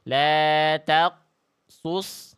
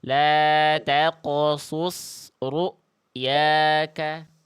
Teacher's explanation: qalqalahkan pantulkan qofnya dengan pantulan yang tebal